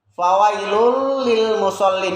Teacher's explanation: ini ada tanwin ketemu dengan huruf lam. Tanwinnya hilang, melebur ke huruf berikutnya, sehingga bukan dibaca fawailun tapi fawailul. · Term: idgham bila ghunah